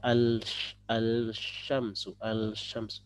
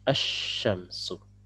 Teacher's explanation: Ya, ini berpadu maksudnya adalah rebut-rebutan tempat keluar ya, karena keluarnya dua-duanya dari lidah ya, lam dari lidah, shinnya dari lidah, makanya ini akan bertabrakan tempat keluar. Nah, satunya ngalah kemudian memberikan tempat kepada huruf yang kedua yaitu huruf shin untuk mentasydidkan. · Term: huruf syamsiyah